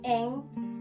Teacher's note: bunyi Eng bunyi nasal dorsovelar